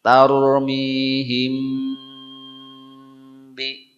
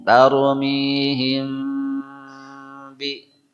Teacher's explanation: Nah, itu harus ikhfa dulu. Suara mim tahan sebentar dalam kondisi bibir tidak dirapatkan, tidak dikawat begitu, tidak didedet. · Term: ikhfa syafawi